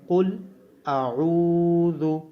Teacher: عین کو واو مدہ ہونے کی وجہ سے لمبا کیا جائے گا اور ذال کو نرمی کے ساتھ ادا کیا جائے گا. عین کی آواز گلے سے آئے گی